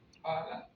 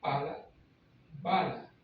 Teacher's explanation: con una vibran las cuerdas vocales y con la otra no · muy sencilla las dos se pronuncian con los labios pala B Las dos son oclusivas es decir cortan la salida del aire y la cortamos por los labios